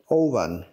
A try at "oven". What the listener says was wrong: So, first of all, he said the V well. He said V instead of W. But the O was a problem. Oven.